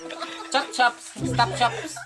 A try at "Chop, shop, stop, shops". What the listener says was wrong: Uy, madam. Hindi man chops. Shops man. Shops.